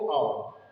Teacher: ओ औ, इसमें कंठ और होठों का प्रयोग होता है, इसलिए बोलते हैं कंठोष्ठ,